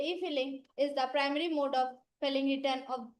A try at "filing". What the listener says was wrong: I don't say filling, it's a filing. Filing अच्छा नहीं लगता. Filing.